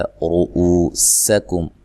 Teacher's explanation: را کو موٹا ادا کرنا ہے، او واو مدہ ہے، سین کو باریک سیٹی سے ادا کرنا ہے، کاف کو باریک پڑھنا ہے، میم ساکن کا اظہار ہے۔